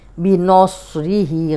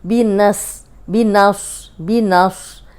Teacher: सौद मोटा है तो नून ज़बर सौद, नस, नस। नून को बारीक रखेंगे, सौद को मोटा करेंगे।